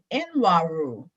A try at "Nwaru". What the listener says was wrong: It's pronounced Waru. It's pronounced Waru. Let's pretend that the N is silent.